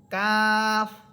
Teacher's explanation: কাফ এটা জিহ্বার গোড়া থেকে একটু উপরের দিকে এসে উপরের তালুর সাথে লাগবে।